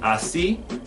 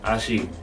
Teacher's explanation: Another sound that the S can make will be the Colombian S sound. This is found in some regions in Colombia where it's just an SH. So instead of saying así, I will say ashi.